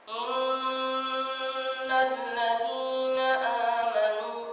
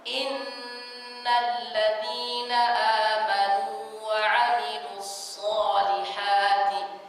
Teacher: Dia membaca suara tinggi, tapi suaranya tidak lepas, ditahan. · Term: suara hidung